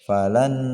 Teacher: Fadzuqu falan lan dimasukkan bacaan nunnya ke huruf nun yang kedua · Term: idgham bi gunnah